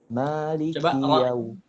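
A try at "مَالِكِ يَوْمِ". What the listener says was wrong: Lagi kalau ketika fathah agak dibuka lagi. Ingat ya, fathah itu mulutnya kebuka. Jangan terlalu kaku gitu. Bagus, udah bagus, nggak monyong ke depan, bagus. Tapi kita pengen lebih natural lagi.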